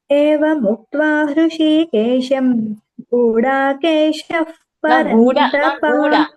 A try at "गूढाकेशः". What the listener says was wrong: Not Guda. Gu short. Gudakesha.